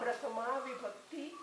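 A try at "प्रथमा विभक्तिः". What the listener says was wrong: Vibhaktihi. Vibhaktihi, Visarga should not be dropped.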